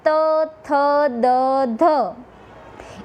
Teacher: એના પછી દંત્ય વ્યંજન એટલે કે જે વ્યંજનના ઉચ્ચારણ વખતે જીભનો આગળનો ભાગ દાંતને સ્પર્શે અને જે વ્યંજનનું ઉચ્ચારણ થાય છે તેને દંત્ય સ્પર્શ વ્યંજન કહેવામાં આવે છે.